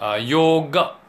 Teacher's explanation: the last a is not completed as aa but as up